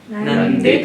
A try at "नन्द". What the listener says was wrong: दकार के बाद अकार है। एक अक्षर हलंत करते हैं ना, तो वो हलंत ही होता जाता है।